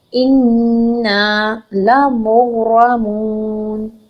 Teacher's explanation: غنہ کریں گے، آواز کو ناک میں ٹھہرا لیں گے 2 حرکت